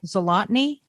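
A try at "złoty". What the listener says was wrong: Zloty. There's no N. Yeah, there's no N in it.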